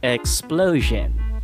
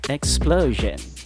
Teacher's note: let's put in our schwas and you actually only have um one schwa in the term explosion and it is the i o n sound at the end